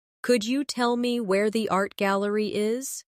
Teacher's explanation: In connected speech, could you becomes could ya.